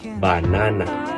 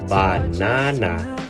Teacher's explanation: Syllable stress. In Filipino English, syllables are often pronounced with equal stress, unlike the varying stress patterns in American English. · banana may be pronounced as banana, equal stress. In Filipino English versus banana, second syllable stress in American English.